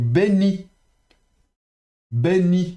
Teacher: on prononcera bet occlusif et on prononce pas le yod, be, n, le noun et puis i.